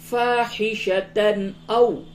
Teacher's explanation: او تنوین کے بعد حمزہ ہے، اس وجہ سے اس جگہ پہ اظہار ہوگا